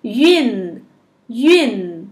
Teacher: Essa sílaba termina com N, então a gente cola a língua no céu da boca.